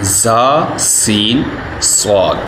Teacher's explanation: ان 3 حروف زا، سین، صاد کو ادا کرتے وقت سیٹی کی طرح تیز آواز نکلتی ہے، اس لیے ان حروف کو حروف صغیریہ یعنی سیٹی والے حروف کہتے ہیں۔